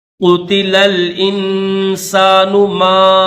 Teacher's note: 4 second کھینچیں گے کیونکہ مد منفصل ہے